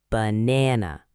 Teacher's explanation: It has three syllables, ba na na. Notice the middle syllable is stressed. It's longer and stronger